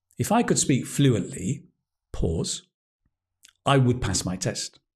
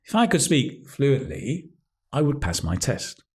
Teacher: The phrasing here is I stop after fluently.